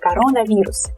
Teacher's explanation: So this O is definitely unstressed, but since it's kind of two words within one word, we pronounce them separately. So we pronounce these two roots, these two stems separately